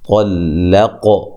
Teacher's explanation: طلق قاف کو موٹا ادا کرنا ہے، ٹھیک ہے، طا کو موٹا ادا کرنا ہے، بیچ میں لام کو باریک پڑھنا ہے، قاف پہ قلقلہ بھی کرنا ہے۔